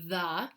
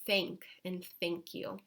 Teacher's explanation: So first we start off with going the difference between the two sounds. So the voiced is activating the vocal cord, like in the word the, and the unvoiced version of it is just the air coming out, like in thank and thank you.